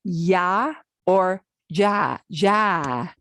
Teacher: hear as ya or ja ja and both are fine because the pronunciation you hear for ya may have a little ja may have a big ja may have a just completely y sound